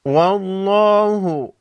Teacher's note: لفظ اللہ سے پہلے حرف واو پر زبر ہے، لفظ اللہ کے لام کو موٹا پڑھیں گے